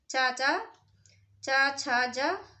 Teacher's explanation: तालव्य में चा चा चा छा जा आदि वर्ण आते हैं।